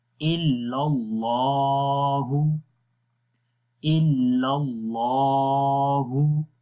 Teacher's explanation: आगे है इल्लल्लाहु, तो यहाँ पर अल्लाह का नाम ग्रीन है, यानी कि अल्लाह के नाम के अंदर जो लाम है उसको मोटा पढ़ेंगे।